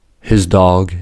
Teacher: Consider for example these two sounds: “his dog”’ and “his pet.” The ‘D’ in “dog” is a voiced sound, so the ‘S’ in “his dog” is assimilated to the voiced /z/ sound. By contrast, the ‘P’ in “pet” is a voiceless sound, so the ‘P’ in “his pet” is assimilated to the voiceless /s/ sound.